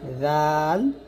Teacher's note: জাল উচ্চারণ করতে হবে জিহ্বার আগা সামনের উপরে দুই দাঁতের আগার সঙ্গে লাগিয়ে পাতলা করে জাল।